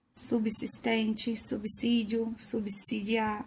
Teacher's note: Vai ter o fonema si e não zi.